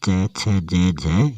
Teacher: च वर्ग जो होता है उसको बोलते हैं तालव्य स्पर्श व्यंजन।